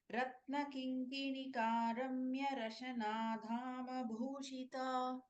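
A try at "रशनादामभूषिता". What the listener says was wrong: Rashana Dama. Da is an Alpa Prana. Ratna Kinkinikaramya Rashanadama Bhushita.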